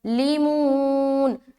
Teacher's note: ظا کو منہ بھر کر بولنا ہے اور کھڑا زبر بھی ہے تو لمبا کریں گے